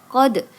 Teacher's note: Qalqalah sugro karena ada Dal yang bersukun jadi bacanya pantulkan